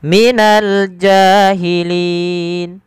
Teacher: Maka bacaan linnya kita boleh panjangkan 2 harakat, boleh 4 dan boleh pula 6 harakat. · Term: mad arid disukun